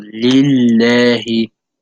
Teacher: So on the word lillahi, there's a kasra on the lam, and it's a shadda. So you make the lam appear twice. You say it as if you're saying it twice. So you stress it.